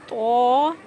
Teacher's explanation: जुबान की कोनी ऊपर के दो दांतों के जड़ में लगाने से तो अदा होता है